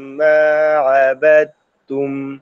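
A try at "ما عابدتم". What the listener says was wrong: ডাল আরো পাতলা করে, ঠিক আছে? পাতলা করে পড়বো। আবিদুম আবিদুম, একটু মোটা হয়ে গেলে কিন্তু দদের দিকে চলে যাবে, এদিকে দিব না আমরা, ঠিক আছে?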